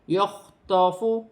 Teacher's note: خا حروف حلقی میں سے ہے، حلق سے ادا کیا جائے گا